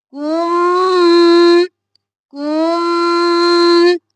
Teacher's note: میم پر تشدید ہے 2 بار پڑھیں گے اور غنہ بھی کریں گے۔